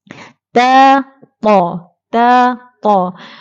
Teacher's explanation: kedua-duanya makhraj sama, iaitu di hujung lidah ditekan di belakang gigi kacip atas. Ta.